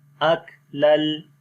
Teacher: حمزہ کاف زبر اک، لام لام دو زبر لل، اک لل. یہاں پر ادغام بغیر غنے کے ہوگا، دو زبروں کے بعد لام آ گیا